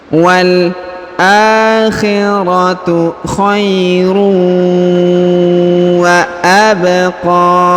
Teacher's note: tanwin unnya melebur menghilang ke huruf waw bertasdid